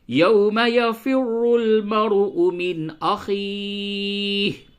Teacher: نون کی آواز کو ظاہر کر کے پڑھیں گے، اسے اظہار کہتے ہیں